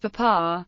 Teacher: In the common pronunciation of papar, the initial P is aspirated whereas the medial P is not.